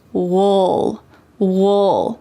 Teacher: in fast American English, we often reduce this in a relaxed way, and we say wool, wool.